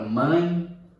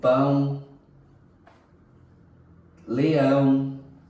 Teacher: Notamos aqui na mesma o encontro vocálico, e geralmente aqui com acento, com o tio, né, que nós costumamos chamar, ele vai tomar esse tom nasal. É o encontro vocálico que é nasal